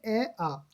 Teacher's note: ए आ का स्थान जो होता है कंठ होता है ना